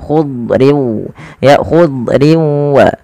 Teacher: Padahal huruf dad tidak punya sifat qalqalah, tapi dia punya sifat yang pertama isti'la, yaitu pangkal lidah terangkat dan dia menebal